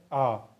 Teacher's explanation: आ एक ही एकमात्र ऐसा स्वर है जो विवर्त है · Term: विवर्त स्वर